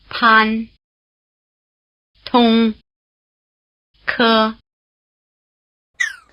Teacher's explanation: Chinese P T and K sounds are very strongly aspirated · The initial consonant sounds are more explosive than their English equivalent. You might also say they're breathier.